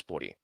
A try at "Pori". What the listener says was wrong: It's pronounced Pori, not Puri.